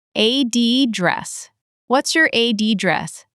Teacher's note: in American English, the noun often shifts to the first syllable.